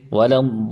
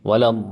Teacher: We are going to say وَلَضَّالِّينَ. So there must be hardness on the lam because of the muthaqqal, the tashdid. A person cannot merely read وَلَضَّالِّينَ.